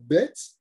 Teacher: Donc si par exemple, on dit les lettres qui sont découpées par les lèvres, ce qu'on appelle au tiret boumaf, eh bien, le bet, par exemple, quand je dis un bet, le bet, c'est quoi qui bouge dans ma bouche? Ce sont mes lèvres. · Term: labiales